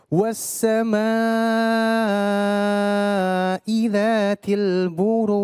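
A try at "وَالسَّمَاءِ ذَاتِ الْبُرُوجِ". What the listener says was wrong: Ya, itu masih ada. Ya, buruj. J biasa J. Baje. Biasa aja baje. Ya, jangan baj. Jangan hilangin itu ya. Baje. Ya, buruj.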